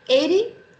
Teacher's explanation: 80 is a flap T because the T is between two vowel sounds.